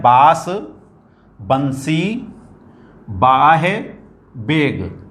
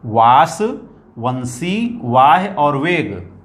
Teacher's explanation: वाह दांत और होठों के प्रयोग से ये उच्चरित होता है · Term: दंत्योष्ठ